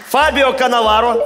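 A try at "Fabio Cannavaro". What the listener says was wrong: Фабио Каннаваро, да. Правильно.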